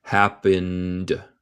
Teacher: en happened suena como de en vez de te.